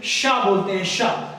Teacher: जब ये शा बोलते हैं तो शा में जीभ थोड़ा फ्लैट होती है और जाके तालु पे पूरा फोकस मारती है और वहां पे एक हवा का कह लीजिए पब बन करके एक सरसराहट के साथ आवाज निकलती है, शाह बोलते हैं, शाह। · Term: तालव्य शाह